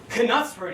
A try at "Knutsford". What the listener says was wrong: It's pronounced Knutsford. The K is silent.